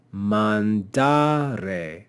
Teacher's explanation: the next to last syllable is long because it contains a long vowel therefore since the penult is long the penalt will be accented